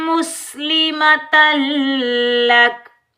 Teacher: लाम शदीद पर हम गुन्ना नहीं करेंगे, इदगाम होगा